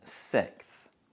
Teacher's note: most native speakers elide the s sound in the middle. So we usually pronounce it sixth.